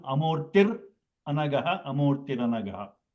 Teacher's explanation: It is the Visarga will become Repa. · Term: Guru Brahma sandhi